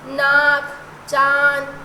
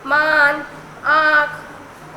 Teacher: आप बोलते समय नाक में थोड़ी सी आवाज़ हो जाती है ना, तो इनके उच्चारण में नाक और मुंह दोनों से ध्वनि निकलती है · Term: अनुनासिक